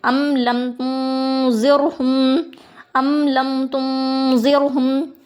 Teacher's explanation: حرف تنوین و نون ساکن کا اخفے کا قاعدہ ہے، تو یہاں نون ساکن کو ہم ناک میں چھپا کر ایک الف کی مقدار پڑھیں گے، گناہ کر کے پڑھیں گے